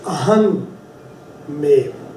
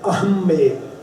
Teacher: But when you actually put the two together, aham mev, it is pronounced ahmev.